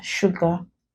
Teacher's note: The S there, pronounced as sh, not s. So this is not sugar, but sugar.